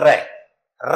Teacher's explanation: जब इस वर्ण को बोलते हैं तो जीभ में क्या होती है कंपन उत्पन्न होती है इसलिए इसको क्या कहते हैं परं कंपित कहते हैं उसको क्या